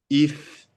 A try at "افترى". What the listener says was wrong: C'est if ou c'est ish. Voilà, il y a trois dents. Donc c'est la lettre shin.